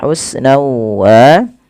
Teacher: Kemudian lafal husna wa di sini masukkan tanwinnya kepada huruf waw karena dia idgham bi gunnah